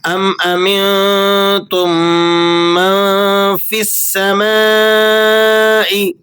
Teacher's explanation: مد متصل واجب کی مقدار 4 الف ہے